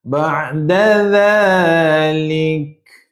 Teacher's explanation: Kaf tuan-puan nak waqaf ada angin sikit